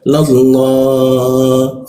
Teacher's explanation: maka lam bertasydidnya dibaca ke arah o dia. Tapi mulutnya a, tapi keluarnya ke arah o dia. Lallahu masuk ke hu, tenggorokan bagian bawah.